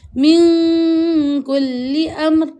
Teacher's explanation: Ada satu, min kulli amr, min dengung. Nun mati bertemu dengan kaf, hukumnya ikhfa hakiki, iaitu kita kena dengungkan bacaan dua harakat. Min kulli amr, dengung dua harakat.